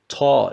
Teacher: dil ucu ile üst ön diş dipleri Efendim bunun çıkış yeridir kalın T sesi gibidir ta şeklinde okunur veya Boğa Boğa şeklinde vurdurularak okunur hep Efendim